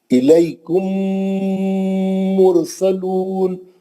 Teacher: ہونٹوں کو سختی سے پکڑ کے اچھا غنہ کرنا ہے، میم کا غنہ